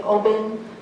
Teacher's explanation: a V sound is often replaced by a B